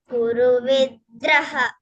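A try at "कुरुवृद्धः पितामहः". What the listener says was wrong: Draha. No, not draha. Dhaha. Vriddhah. Vriddhah.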